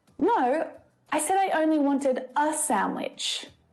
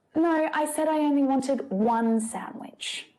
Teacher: it's much more natural to stress the number rather than stress the article, because the important information is that there is just one of something.